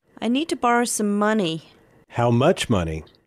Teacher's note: the prominent stress shifts to much because money is now old information and the important information is how much money.